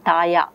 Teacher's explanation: La is retroflex lateral is replaced by the semi-vowel ya, taya, which is simpler. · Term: gliding